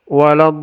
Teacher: Do-nya panjang 6 harokat, ini dibaca 6 harokat, lalu tasdidnya dibacakan, baru masuk ke lin. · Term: mad lazim kalimi musaqqal